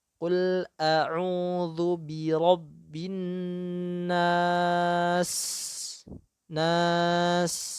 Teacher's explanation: Kemudian sin memiliki sifat rokhwah. Artinya biarkan sinnya mengalir dulu meskipun sudah disukun.